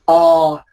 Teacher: Các bạn thấy là cái âm nó tọt đâu trong cổ họng, O, chứ nó không phải âm A. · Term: âm O